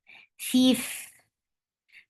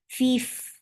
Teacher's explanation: Fa will get sifa of hams and rakhawa, and it is light. Fif, the sound should flow because it has rakhawa.